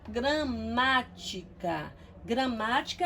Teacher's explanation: Gramática é uma palavra proparoxítona, ó, ela é uma palavra proparoxítona e se você percebeu na intensidade da minha pronúncia, né? Você percebe que eu pronunciei a sílaba ma com um pouquinho mais de força. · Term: sílaba tônica